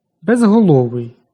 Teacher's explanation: Г дзвінкий, тож уподібнення за глухістю не відбувається.